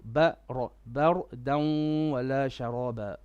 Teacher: the ra here needs to be heavy because of the fatha before